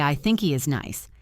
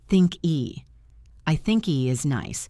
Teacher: The K sound links to the E sound.